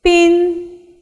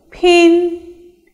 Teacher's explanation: pin is an unaspirated sound and pin is an aspirated sound